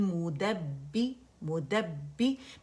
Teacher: پہلے با پہ ہماری آواز بند ہو گئی اور دوسرا کسرہ کے ساتھ ہم نے اٹھایا ہے